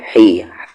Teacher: ہا پر زیر ہی، اس ہا کا مخرج بیچ والا حلق